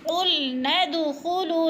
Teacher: وَإِذْ قُلْنَا ادْخُلُوا، قل، لام کو ہلانا نہیں ہے، قوف موٹے حروف میں سے ہے، قُلْنَا ادْخُلُوا، ند کو جب پڑھیں گے تو دال پر قلقلہ کریں گے، کیونکہ دال حروف قلقلہ میں سے ہے، اس کو ہلا کے پڑھنا ہے۔